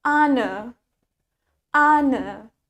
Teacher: Jadi, R-nya nggak kedengeran.